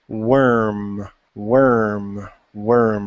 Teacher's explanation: with worm there's really there's no tongue you're not touching anything